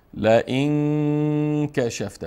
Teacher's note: بعد از نون ساکن حرف کاف آمد و کاف از جمله حروف اخفاست، بس نون مخفی میکنیم